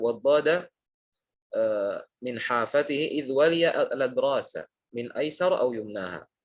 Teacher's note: huruf dot keluarnya dari hafah lisan, dari sisi lidah menyentuh dengan gigi geraham atas ya, baik kanan ataupun kiri